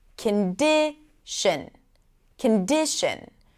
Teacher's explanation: Let's take the word condition. The middle syllable, di, is the primary stress.